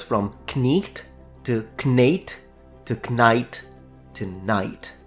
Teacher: But in the 1400s, so 15th century, as the Great Vowel Shift started to happen, the vowel changed from E to A, and only finally in the 18th century, I.